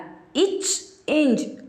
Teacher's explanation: இச் இஞ்ச் ஆகிய இரு மெய்களும் நாவின் இடைப்பகுதி நடு அன்னத்தின் இடைப்பகுதியை பொருந்துவதால் பிறக்கின்றன.